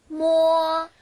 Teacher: 모어 하면요 한국어에 여러분들 미음 발음이 나거든요 그래서 두 입술 붙였다가 떨어뜨리면서